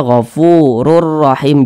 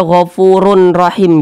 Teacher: bunyi tanwin ini langsung masuk atau langsung melebur ke huruf ra. Jadi dibaca ghafurur rahim. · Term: idgham bila gunnah